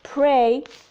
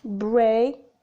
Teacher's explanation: Both are bilabial, plosive, or stops. P is voiceless and b is voiced.